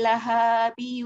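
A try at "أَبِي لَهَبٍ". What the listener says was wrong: Haknya pendek. Lahabi.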